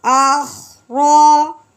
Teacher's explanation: رو کے اوپر زبر، رو کو پر پڑھیں گے موٹی کر کے